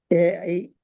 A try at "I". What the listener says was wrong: ஐ நாக்கு நாக்குக்கு என்ன நடக்குது, தெளிவா சொல்லணும், மிக தெளிவா சொல்லணும். ஐ ஐ முன்னுக்கு போதா. அப்போ நீ சொல்ற நாக்குல பிரச்சனை. ஐ என்று சொல்ல போக நாக்கு அசையாது. சொல்லி பாருங்க. ஐ நாக்கு என்ன செய்யக்கூடாது, அசையாது. ஐ என்று சொல்ல நேரம் நாக்குட உள்பகுதி, தொண்டையோட வர பகுதி என்ன செய்யணும்னா லைட்டா தூக்குப்படணும் மேலுக்கு. ஐ ஆ ஆ தூக்குப்பட்டதான் ஐன் சரி. இதான் வித்தியாசம். ஐ ஐ ஐ ஆய்